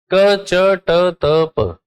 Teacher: इनको बोलते समय साउंड कम बाहर मतलब सांस जो है वो कम बाहर निकलती है